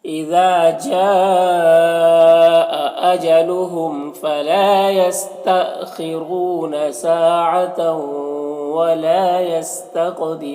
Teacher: جا میں جو مد ہے مد متصل ہے، اسے 3 سے 4 الف کے برابر کھینچیں گے · یہاں پر تنوین کے بعد واو حروف یوبن میں سے تو ادغام ناقص ہوگا، غنہ کے ساتھ میں پڑھیں گے، ولا میں الف مدہ ایک الف کے برابر کھینچیں گے۔ یہاں پر قاف حروف مستعلیہ میں سے پر پڑھیں گے اور قاف میں قلقلہ بھی کریں گے۔ یہاں پر وقف کی صورت میں مد عارض وقفی ہوگا تو اس طرح سے پڑھیں گے۔